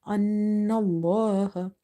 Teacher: So here we have fatha before the letter lam in the word Allah. It will be heavy.